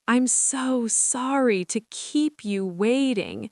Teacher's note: put stress on sorry and waiting